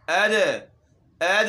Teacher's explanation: ये इसमें उस वक़्त हम झटका देकर पढ़ेंगे जब ये साकिन हो, जैसे यहाँ पर है। वमा अद, दाल है, ये साकिन है, इसमें हमने झटका देना है